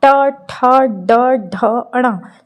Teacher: ट वर्ग जो है वो मूर्धा कहलाता है। मूर्धा का क्या मतलब होता है कि आपकी ज़बान थोड़ी सी मुड़ती है। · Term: मूर्धन्य